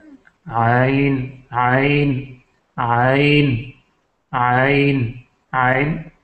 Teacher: یہ وسط حلق سے نکلتا ہے